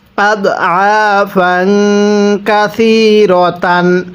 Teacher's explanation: এই তানবিনের পরে কাফটি হলো ইকফার হরফ এজন্য আমি তানবিনে গুনাহ করছি